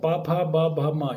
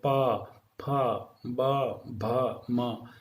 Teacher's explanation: ये ओष्ठ्य ध्वनियाँ हैं, क्योंकि इनको दोनों को बोलने में दोनों होठ आपस में मिलते हैं।